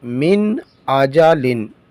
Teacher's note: نون ساکن کے بعد حروف حلقی میں سے حمزہ آیا ہے تو یہاں پر اظہار کریں گے، یعنی ظاہر کر کے حرف کو پڑھیں گے، گنہ نہیں کریں گے